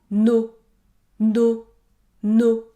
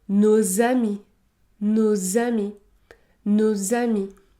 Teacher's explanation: je dois effectuer la liaison, le S se prononce et produira le son Z